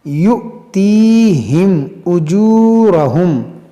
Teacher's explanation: أولئك سوف يؤتيهم أجورهم، یہاں پر دیکھیں حمزہ ساکنہ ہے، اور حمزہ ساکنہ کو جھٹکا دے کر پڑھا جاتا ہے